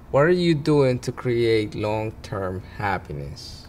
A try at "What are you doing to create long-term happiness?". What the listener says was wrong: More pitch. Happiness, yeah.